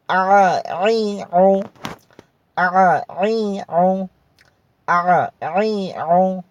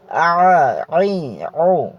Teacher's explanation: গলার চাপ দিয়ে পড়তে হবে, গলার মধ্যখান থেকে উচ্চারিত হবে, গলাটাকে একটু চাপ দিতে হবে। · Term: আইন